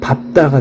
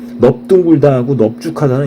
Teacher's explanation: 밥다하고 밥지 같은 경우는 뒤에 자음이 오면서 앞에 리을이 탈락돼서 예외적인 현상을 보이는 거예요. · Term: 리을이 탈락되는